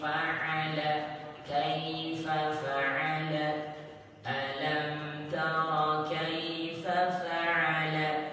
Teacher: Fa'ala, ditenggorokan ya, ditenggorokan bagian pertengahan. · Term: ain